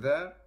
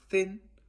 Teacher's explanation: produced with the tip or the blade of the tongue touching the back of the upper teeth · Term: interdental